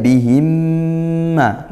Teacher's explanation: mim sukun bertemu mim idgham mli dibaca masuk ya baca masuk ke mimnya dan juga dengung